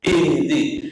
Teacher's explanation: Kalau baca ihdi juga jangan qalqalah. Itu qalqalah yang tidak pada tempatnya.